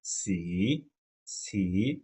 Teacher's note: Third tone আছে, টানতে হবে, থার্ড টোন।